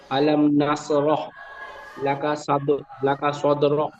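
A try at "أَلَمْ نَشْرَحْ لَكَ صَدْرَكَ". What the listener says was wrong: আলাম নাস হয়ে যাচ্ছে, নুন শিন যাবার নাস, শিন রয়েছে, শিন অক্ষরটি, হ্যাঁ, শিন অক্ষরটি সিনের মতো উচ্চারণ হয়ে যাচ্ছিল।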